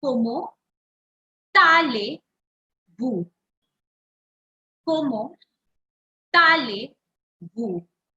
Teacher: I'm calling it tale and not ale because this word is starting with a vowel. So the previous word last letter will be pronounced.